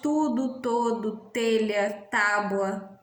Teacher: Mas há também outras marcas nesse sotaque, o T pronunciado com uma consoante linguodental diante de I. A pronúncia linguodental, né? O T, né? É a que realizamos nas palavras tudo, todo, telha, tábua.